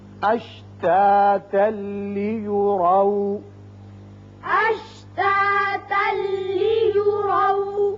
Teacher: یہاں اشتاتا وقت کی صورت میں ہے لیکن یہاں اوپر لا لکھا ہوا ہے, ملا کر پڑھنا زیادہ بہتر ہے. ملانے کی صورت میں یہاں تنوین کے بعد لام آ گیا, ادغام بغیر غنہ ہوگا اور آ کے اوپر زبر ہے اس کو پر پڑھیں گے.